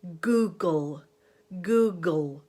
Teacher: It could also be the vowel sound oo, although you want to make sure that when you go into the dark L, you really relax your lips because they'll be rounding for that oo. So you could take a word like Google, Google, because all the sounds in that word require the back of the tongue to be lifting up.